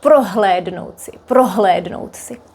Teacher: The H might sound a bit weaker, but it's still h.